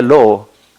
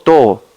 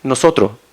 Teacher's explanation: en español chileno tenemos alto debilitamiento, entonces cosas como B, D, Y o S las debilitamos y removemos muy seguido. Entonces yo puedo decir, por ejemplo, en vez de lobo, lo común sería lobo, o en vez de todo, todo, ¿no es cierto?